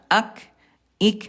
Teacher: kalau kaf dia syiddah kuat juga tapi dia ke hams. Ada udara